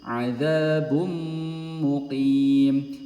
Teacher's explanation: Jadi domah tanwin langsung masuk ke huruf mimnya tanpa mengucapkan bun. Adzabun kalau bun muqim jadinya idhar.